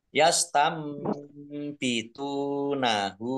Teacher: bacaan iklab. Nunnya dibaca mim